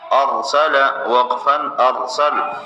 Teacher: ارسل وقفاً ارسل، کلمے کا آخری حرف پہلے ساکن ہے، وقف میں کوئی تبدیلی نہیں آئے گی۔ را ساکن سے پہلے زبر ہے، را کو موٹا پڑھیں گے